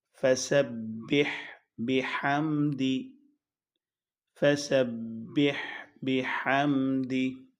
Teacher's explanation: ہا ساکن اور حلق سے ادا کیا جائے گا بہت کلیئرٹی کے ساتھ، سین سختی کے ساتھ